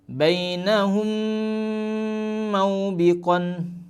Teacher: mim sukun bertemu dengan mim, maka cara bacanya dengung 3 harokat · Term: idgham mimi